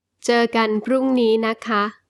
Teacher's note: The polite particle for female speakers. Ka. With a high tone is also used when it follows other particles such as the word. Na.